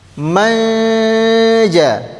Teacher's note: Nun sukun bertemu dengan huruf jim hukumnya adalah ikhfa hakiki. Artinya dia disamar-samarkan plus dengung dengung dua harakat. Manja. Manja itu namanya samar-samar bukan many.